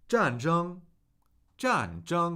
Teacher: Fourth tone, first tone. So a falling tone on John.